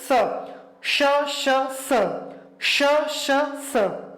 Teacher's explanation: जब हम इनका उच्चारण करते हैं तो मुख के अंदर घर्षण या रगड़ पैदा होती है, जिससे ऊष्मा उत्पन्न होती है, ठीक है। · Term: ऊष्म या संघर्षी